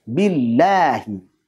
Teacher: Kenapa lam tipis? Ya, karena lam pada lafaz Allah ini sebelumnya adalah kasrah. Billahi, sehingga lamnya tipis.